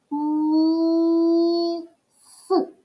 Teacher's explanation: третій звук с твердий приголосний